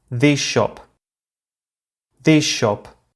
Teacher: In the phrase, this shop, the sh of shop influences the way we pronounce the final s of this, and we end up saying this shop, as if we had two sh sounds. However, whereas the first sh is retained, the second sh is released, so they sound as if they were one long sh. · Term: regressive assimilation